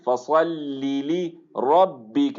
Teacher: لام کے اندر تفخیم نہیں آنی چاہیے